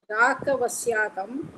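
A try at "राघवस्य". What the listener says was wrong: ராக சொல்றீங்க மாதிரி கேக்குறது எனக்கு. ராக சொல்லுங்க. பிரிக்காதீங்க. ராகவஸ்ய அப்படியே சேர்த்து சொல்லுங்க. ராகவஸ்யான்னு பிரிக்காதீங்க.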